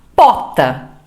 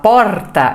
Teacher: ela vai engolir esse R invés de falar porta ela vai falar pota